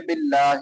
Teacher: باللہ، لفظ اللہ باریک ہوگا